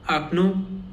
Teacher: And in this word only the last O is stressed.